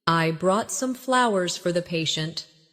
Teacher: Stress flowers to show the gesture.